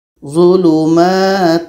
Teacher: dengung yang ada pada tanwin ini terbawa masuk kepada wa. Proses masuknya dengung kepada wa ini disebut dengan idgham nakish karena masuknya itu bukan secara sempurna.